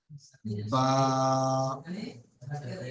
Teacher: দেখুন, বা এর নিচে এক আছে, তার মানে বা যখন আমি উচ্চারণ করব তখন বাটা এক আলিফ পরিমাণ টান দিয়ে পড়বে